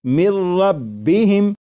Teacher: لکھا ہوا ہے من، لیکن جب نون ساکن کو را میں ملا کر پڑھیں گے تو پھر نون ساکن کی آواز نہیں آئے گی، بلکہ میم کے بعد را کی آواز آئے گی، اور یہاں پر غنہ نہیں کریں گے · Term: ادغام